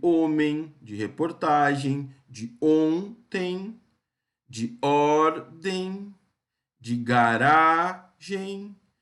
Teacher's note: Notem que as sílabas tônicas são as penúltimas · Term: paroxítonas